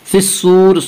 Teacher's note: صاد کو پر پڑھیں گے، صاد حروف مستعلیہ میں سے ہے